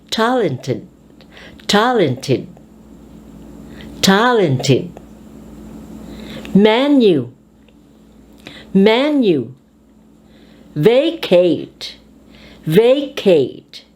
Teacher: the words here that you will study are accented on the first syllable